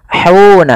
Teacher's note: hati-hati jangan menebalkan huruf ha.